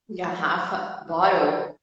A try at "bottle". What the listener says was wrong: Isso, só que daí, como tu falou, saiu um som de U no final. Porque pra gente não tem L no final da palavra. Se tu for falar, por exemplo, total, é total, com U no final, né?